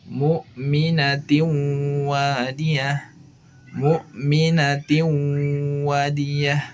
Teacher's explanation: makhraj nun atau tanwin menghilang dan melebur ke wawu, tetapi sifat huruf nunnya masih ada, yaitu sifat gunnahnya. Maka ini disebut dengan idgham, tingkatannya idgham nakis.